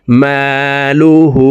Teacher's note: হার উপরে উল্টা পেশ আছে, তাই ঠোঁট গোল করে এক আলিফ টেনে পড়তে হবে। হা উল্টা পেশ হু, মালুহু।